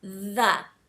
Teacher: feel sort of a buzzing feeling on your tongue like it sort of vibrates a little